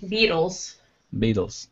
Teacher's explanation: have the T be more like a D